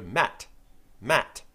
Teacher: go Matt Matt the T sound at the end of Matt your tongue is touching the same place was touching with d but there's no vibration